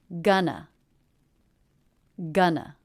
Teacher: The first syllable has the G consonant, as in butter vowel, a nice clean N, and the second syllable the schwa. The first syllable is stressed, gun, and the second syllable unstressed